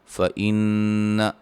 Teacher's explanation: نون مشدد پہ غنہ ہے